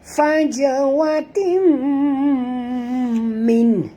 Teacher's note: tanwin itu baris dua di bawah bertemu dengan mim. Wajib dengung.